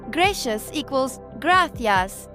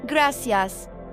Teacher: In Spain, C before E or I sounds like TH. Gracias equals gracias. In Latin America, it sounds like S.